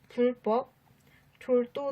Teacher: 또 세 번째, 한자 리을 뒤에서도 예삿소리가 된소리로 바뀝니다.